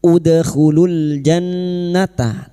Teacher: nun yang bertasdid gunna musyaddada kita dengungan selama 3 harokat